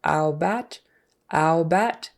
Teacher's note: she puts a little more emphasis on that first syllable. She's still kind of stressing the second, but it's more ow bat, instead of a really short about.